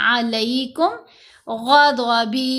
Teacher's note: यहाँ वक्फ आया, ये जो जीम है वक्फ जायज़ की लामत है, हमने यहाँ वक्फ किया तो मद्दा हरूफ के ऊपर वक्फ है, इसलिए हमने बा को साकिन नहीं किया, गदब ऐसे नहीं करना, बल्कि हरकत के साथ ही पढ़ेंगे